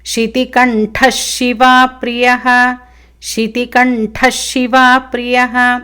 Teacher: శితికంఠః శివాప్రియః, మళ్ళీ కంఠః విసర్గ, దాని తర్వాత షి వచ్చింది కాబట్టి విసర్గ మళ్ళీ షకారం అవుతుంది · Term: విసర్గ షకారం